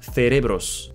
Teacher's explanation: in Spain, it should be pronounced cerebros. Th, like in think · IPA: /θeˈɾeβɾos/